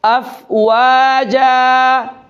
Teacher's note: يدخلون، دال پر قلقلہ ہے، يدخلون في دين الله أفواجا، أفواجا، أفواجا۔ جیم کو ایک الف کو برابر لمبا کریں گے اور آواز کو ختم کر دیں گے